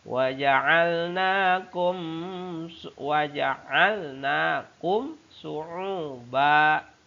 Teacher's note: Ada mim sukun bertemu dengan shin. Hukum bacaannya izhar syafawi, dibaca secara jelas, tegas